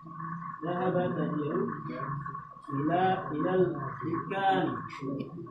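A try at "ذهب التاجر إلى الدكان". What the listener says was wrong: Jangan disamarkan akhirnya. Ila dukan.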